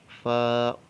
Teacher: ثنایا علیہ کا سرا اور نیچے کے ہونٹ کا اندرونی حصہ، یعنی اوپر والے دانت جب نیچے والے ہونٹ سے ملیں گے اندر والے حصے سے تو یہ حرف ادا ہوگا فا. اس کو فے نہیں پڑھنا، فا.